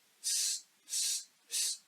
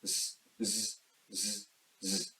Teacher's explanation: Once you learn the articulation of ‘s’, it becomes easier for you to learn the articulation and sound of ‘z’. The ‘s’ sound does not require any vibration on vocal cords or throat so it is unvoiced sound whereas ‘z’ does require vibration on vocal cords so it is voiced sound